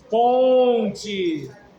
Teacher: o N está nasalizando o som do O